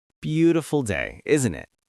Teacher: Notice the rising tone at the end, isn't it? Your voice goes up a little.